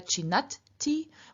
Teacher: the d at the end of chid becomes voiceless in front of the t that begins the third person singular ending t. T is voiceless, and in front of this voiceless t, d also becomes voiceless, so chinat-ti.